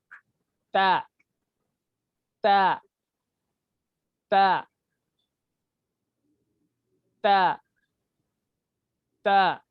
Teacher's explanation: जबान को जो है ये दांतों के पीछे के हिस्से को लगाना। · जबान की जो कोर है, नोक, जबान की नोक, तो ये दांतों को लग रही, ये दांत के पीछे के हिस्से को लग रही।